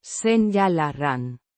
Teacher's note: With the Ñ. representing Ni. sound and the R. slightly rolled.